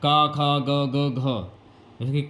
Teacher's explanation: का ख ग ग घ का हो गया खा हो गया ग हो गया और घ ये कंठ से होते हैं ना कि तालू से